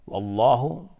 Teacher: لفظ جلاله اینجا تفخیم هست، غلیظ تلفظ میشه چون قبلش فتحه اومده.